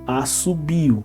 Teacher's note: O de so. Então, por ser o, na hora de falar vira U